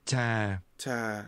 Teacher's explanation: This has a falling tone.